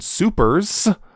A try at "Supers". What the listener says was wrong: No, just Supers. It's, if you say Super S, you're saying it wrong.